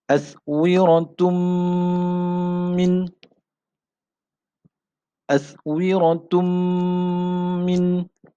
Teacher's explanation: Tanwin berjumpa dengan huruf mim, jadi kita kena dengung. Tanwin itu kita kena idghamkan berserta dengan dengung. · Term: idgham ma'al gunnah